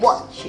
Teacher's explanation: it's like it stop at the t a little bit and then continue with ch